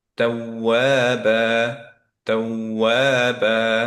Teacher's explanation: প্রথম যে ওয়াওটা, পরের যে ওয়াওটা, এই দুইটার মধ্যে সাউন্ড লেভেলের একটা ভ্যারিয়েশন রাখবো। সো সাউন্ড উঁচু নিচু করব, মাদের কোনো চেঞ্জ করব না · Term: নাবার